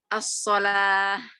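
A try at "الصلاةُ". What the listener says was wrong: huruf terakhir harus diharokati, harus dibaca. Huruf terakhir harus dibaca dengan dhammah. Dengan u.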